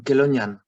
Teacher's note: C and H, it's K, with an aspiration.